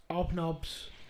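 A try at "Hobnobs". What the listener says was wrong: H's there.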